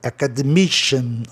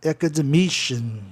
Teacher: Sempre o I, pode ver que sempre o I é a sílaba mais tônica.